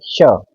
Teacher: तो जीवा हमारे तालू पर जाएगी ये है हमारा तालू तो श का उच्चारण करने में जो जीवा है वो हमारे तालू पर स्पर्श करेगी · श का उच्चारण करने में जो जीवा है वो हमारे तालु पर स्पर्श करेगी। आप उच्चारण करिए श, तो आप इसका खुद भी उच्चारण करके देखिए, श, तालु से हमारी जीवा लगेगी। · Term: तालव्य श